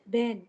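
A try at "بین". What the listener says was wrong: बी। ए तो है ही नहीं ना, ई है हमेशा फारसी में, बेन नहीं है, बीन।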